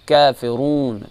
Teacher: یہاں پر کافرون جو ہے ایھل یہ باریک پڑھیں گے، کافرون کا بھی جو ہے باریک پڑھیں گے، اور رون جو ہے را موٹا ہے اور را پر پیش ہے، اس کو را موٹا پڑھیں گے اور اس کو تفخیم سے ادا کریں گے